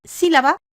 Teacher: tiene su fuerza de acentuación en la antepenúltima sílaba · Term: palabras esdrújulas